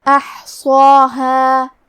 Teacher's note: ہمیں صاد کو اور مد الف کو تفخیم سے مطلب بھاری آواز میں پڑھنا ہے۔ آخری میں ہا ہے اور اس کے بعد مد الف ہے، کیونکہ ہا حروف ترقیق میں سے ہے تو ہمیں ہا کو اور اس کے بعد مد الف کو دونوں کو ہلکی آواز میں پڑھنا ہے۔ · کلمت احصاها میں حرف الحا ہے اور حا کی ادائیگی حلق کے درمیان والے حصے سے ہے، کیونکہ حا پہ جزم ہے لہذا ہمیں حا کو ظاہر کرنا ہے۔